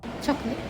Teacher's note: Although it is spelled with 3 syllables, called lit, the standard pronunciation drops the middle vowel sound, the schwa, resulting in just two-syllable word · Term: elision of the schwa